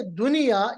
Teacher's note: यहाँ इदगाम नहीं हो रहा है, बल्कि नून पे इजहार होता है, नून को जाहिर किया जाता है।